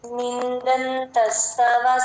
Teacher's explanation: మధ్యలో ఎక్కడ సున్నా ముందు ఎక్కడ వచ్చినా మనం ఎన్ సౌండ్ లాగే చెప్తాము ద కి త కి ఎక్కడ వచ్చినా సరే ఎన్ లాగే చెప్తాము